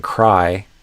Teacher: when you have a K before it, like in cry, the beginning of the R is unvoiced. Almost like I'm kind of whispering.